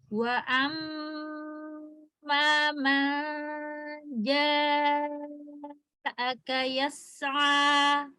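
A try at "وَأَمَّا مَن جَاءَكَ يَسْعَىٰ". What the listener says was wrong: Ja infitah. Ja istifal. Turun lidahnya. Ja.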